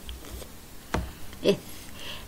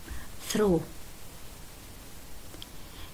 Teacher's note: إذا جربت تلفظ الإث مهموس